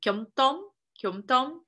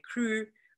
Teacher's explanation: the palatal sound k was actually a distinct phoneme from the velar k